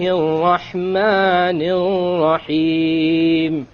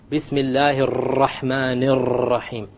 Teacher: Notice the 2 R's with the shadda on them in the Rahman. I didn't roll them.